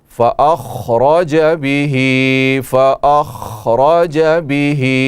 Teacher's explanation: خا حروف مستعلیہ میں سے ہے، پر پڑھی جائے گی، را پر زبر ہے، را کو بھی موٹا پڑھیں گے